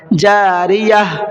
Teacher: سانس توڑیں گے تو اس گولتا کو ہا بنا دیں گے